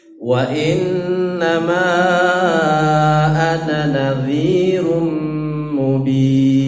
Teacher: Baik, kemudian nadhirum, tanwin ketemu dengan mim dibaca gunnah